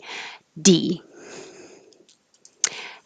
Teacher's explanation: the delay between releasing the D and starting the vowel is a shorter duration. This is called voice onset time, VOT.